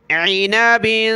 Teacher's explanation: عین کو گلے سے نکالیں